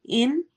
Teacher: ان اظہار ہو رہا ہے یعنی نون کے آواز کو ہم کلیئر پڑھیں گے